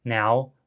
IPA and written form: nɛw (now)